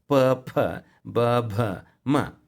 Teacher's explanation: ಓಷ್ಟ ಅಂತ ಅಂದರೆ ತುಟಿಗಳಿಂದ ಉತ್ಪತ್ತಿಯಾಗುವಂಥದ್ದು ಪ ಫ ಬ ಭ ಮ